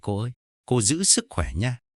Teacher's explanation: Cô kể rằng mình ngạc nhiên không phải vì cấu trúc câu mà vì chữ nha kéo dài ở cuối.